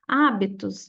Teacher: a sílaba mais forte é onde está o acento, que é o A. Então, aqui a gente classificaria ela em proparoxítona.